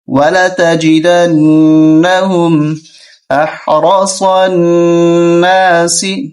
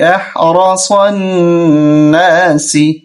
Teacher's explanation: را کو موٹا کریں گے، صاد کو بھی